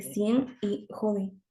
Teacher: la velarización de la N al final de la palabra